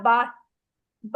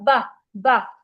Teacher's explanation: जैसे आप बा बा पढ़ते हैं दोनों होठों के मिलाने से, तो ये दो होठों के मिलाने से बा अदा होता है